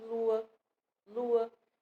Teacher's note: Mas tem palavras, né, em que a gente pronuncia duas vogais separadamente, mas uma delas não soa tão forte assim